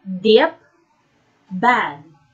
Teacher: And to articulate these sounds, the oral passage is blocked by pressing the tongue tip against the alveolar ridge.